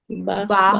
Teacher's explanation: আমরা উচ্চারণ করি তখন দুই ঠোঁট একসাথে মিলিয়ে তারপর উচ্চারণটা আনতে হয়